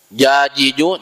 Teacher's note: ketika kita mengucapkan huruf jim, jajiju, jangan sampai ada keluar hamas atau desisnya